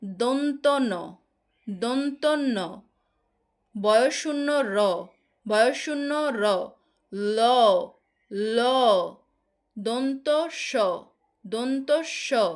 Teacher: জিভের ডগা উপরের পাটির দাঁতের গোড়াতে গিয়ে লাগছে, উপরের পাটির দাঁতের গোড়ার সঙ্গে গিয়ে লাগছে। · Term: দন্তমূলীয় ব্যঞ্জন